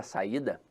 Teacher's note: ela é uma paroxítona por um motivo muito simples a sílaba tônica está na penúltima sílaba